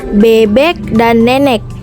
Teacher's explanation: vokal E, tengah bawah depan tak bundar